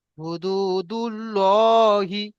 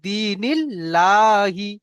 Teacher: আল্লাহ শব্দের ডান দিকে যদি জের আসে অর্থাৎ আল্লাহ শব্দের ডান দিকে অক্ষরের নিচেই যদি জের আসে, তাহলে আমরা আল্লাহর লামকে বারিক করে পড়বো অর্থাৎ লা করে পড়বো। যেমন এখানে দেখেন এই যে জেরের মিসাল দিয়েছে, দাল ইয়াজের দি, দিনিল্লাহি, এখানে কিন্তু লা পড়ছি, দিনিল্লাহি।